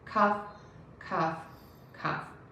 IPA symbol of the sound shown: kʌf